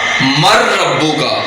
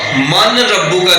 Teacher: کو اس طرح مدغم کریں گے کہ غنہ ظاہر نہ ہو، غنہ ظاہر کیے بغیر نون ساکن اور نون تنوین کو را میں مدغم کر دیں گے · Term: ادغام یرملون